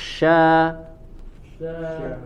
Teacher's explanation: huruf sya dia harus menyebar intisyarur rih ya, harus menyebar udaranya di dalam mulut.